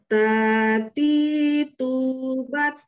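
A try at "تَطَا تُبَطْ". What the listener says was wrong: Kedengarannya jadi tati tu gitu kan ya. Kalau misalkan teman-teman makrosnya benar, itu nggak bakal kedengaran tati tu, tapi tati tu bat seperti itu.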